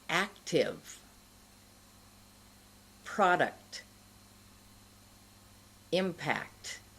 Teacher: you must say the k sound and then touch the tip of your tongue to the place right behind the front teeth. That place, as I said earlier, where you might burn yourself if you eat too hot food.